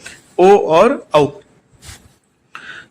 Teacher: इनका जो उच्चारण स्थान है वो होगा कंठ और ओष्ठ। कंठ और ओष्ठ दोनों की सहायता से हम इनको उच्चारण करेंगे, ओ और औ।